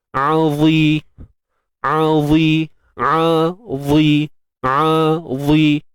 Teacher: Huruf ain dengan dha ni jauh. Sebab ain duduk kerongkong kan? Makhraj kerongkong. Kalau dha ni hujung lidah. Jadi yang jadi sukarnya bukannya sebabkan beza kedudukan tu, tapi sebabkan sifat-sifat dia.